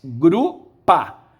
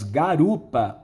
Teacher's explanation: Foi intercalado ali um A. Esse A que foi intercalado faz que a palavra tenha agora três sílabas. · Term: anaptixi